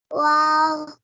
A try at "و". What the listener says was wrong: کھینچنا نہیں آپ کو یہ بتایا تھا.